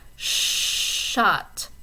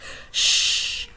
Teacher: Your tongue is not quite on the alveolar ridge, it pulls back just a little bit. And the tongue and that kind of postalveolar area, they're not exactly touching each other all the way. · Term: postalveolar sound